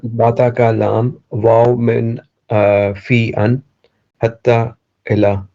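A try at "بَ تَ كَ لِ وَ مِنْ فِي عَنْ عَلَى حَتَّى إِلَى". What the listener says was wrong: Very good. You missed the ala.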